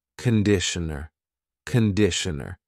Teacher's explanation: It's not conditioner. It's conditioner. The first vowel is a schwa. Conditioner.